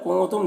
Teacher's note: کنتم نون میں اخفا ہوگا، نون کی آواز کو ناک میں چھپا کر پڑھیں گا